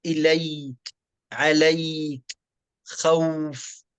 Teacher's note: فالواو والياء تخرج بسهولة لليونة المخرج عند النطق بهذين الحرفين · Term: صفة اللين